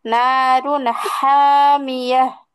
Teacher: হামিয়াহ কণ্ঠের মাঝখান থেকে একটা, আর কণ্ঠের শুরু থেকে একটা, দুইটা হায়ের পার্থক্য আছে কিন্তু